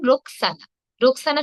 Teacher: মাঝে মাঝে S H এর মত কিছু কিছু ক্ষেত্রে শুধুমাত্র এস এর মত